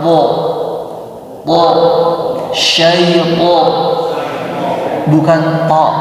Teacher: Itu masih huruf ta. Khas huruf to ini suara o-nya tebal. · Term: isti'la